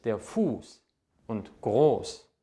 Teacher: der vokal der vor diesem buchstaben steht wird lang ausgesprochen